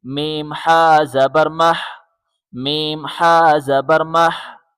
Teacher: حا حلق سے زور لگا کے نکالیں، حا حا کے اوپر جزم ہے، جزم ملانے کے لیے ہوتا ہے، اس طرح میم کو حا کے ساتھ ملائیں گے۔